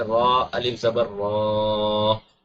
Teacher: را کے اوپر زبر ہے، را کو موٹا پڑیں گے، اس را کی وجہ سے الف کو بھی موٹا پڑیں گے.